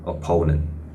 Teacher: So normally for a native speaker, they will start with schwa sound and try to emphasize a little bit on the OA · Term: diphthong of OA